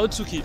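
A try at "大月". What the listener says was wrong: Non, ça s'appelle Otsuki. On ne prononce pas le U.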